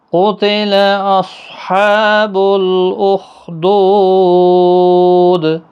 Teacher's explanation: قاف حروف مستعلیہ پور پڑھنا ہے، صاد بھی پور پڑھا جائے گا، خا بھی پور پڑھا جائے گا۔